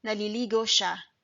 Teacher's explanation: if you want to say it faster, there's no need for the glottal stop. Naliligo siya will become naliligo siya.